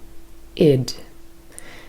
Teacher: it is a combination between a short vowel sound e and the voiced consonant d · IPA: /ɪd/